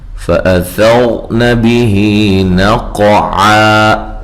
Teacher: ثا کو نرم ادا کرنا ہے، اور را کو موٹا پڑھنا ہے، اور را ساکن سے پہلے زبر ہو، را کو موٹا پڑھا جاتا ہے۔